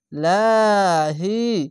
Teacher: যদি জের আসে পাতলা করে হবে লাহি যদি জাবার আসতো বা পেশ আসতো উপরে আসলে লহি হতো